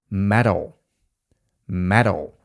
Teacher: Tu mamy dźwięk fast d lub flap t. Ten dźwięk w amerykańskim angielskim powstaje, gdy albo D albo T jest między dwoma samogłoskami.